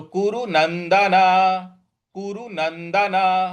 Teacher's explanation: न के आगे जो आधा न है उस पर हमको को आघात देना है